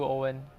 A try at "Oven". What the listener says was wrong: Oven. It's not Owen, it's Oven.